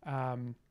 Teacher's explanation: that u is going to be rounded. Hutfi, the u here is going to be rounded, and I'm even dropping that u down a little bit to closer to o.